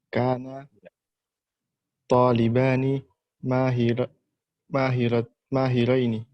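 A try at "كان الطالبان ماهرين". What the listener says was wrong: alif lamnya jangan dihilangin ya. asalnya at-talibani mahirani.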